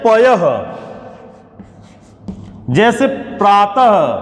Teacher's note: विसर्ग के उच्चारण में ह जैसी ध्वनि आपको बाद में दिखाई पड़ती है